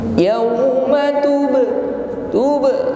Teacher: huruf ba sukun, ada bunyi yang memantul atau qalqalah.